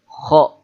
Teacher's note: Kemudian huruf kho, kho, ya seperti orang ngorok.